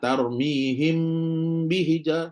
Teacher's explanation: dengung dia lebih panjang daripada izhar · sebab dengung dia sama level sama banyak tiga jari macam Idam Tetapi dia tak sama macam Idam adalah kerana mim tidak masuk ke dalam ba tak masuk dalam ba okey bila dia kata tidak bertasdid tu · Jadi mim baca, ba pun baca selepas tu. Jadi tidak memasukkan mim ke dalam ba. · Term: ikhfa